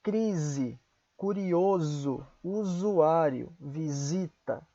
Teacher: se estiver entre duas vogais se pronuncia com som de Z